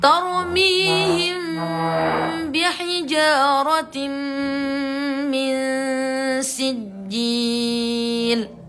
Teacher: Mem itu diakhiri dengan menutup. Ba itu diawali dengan menutup. Jadi dua-duanya sama-sama menutup.